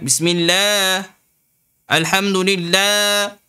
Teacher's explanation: Panjangan Allah. Sekurang-kurangnya 2 harakat.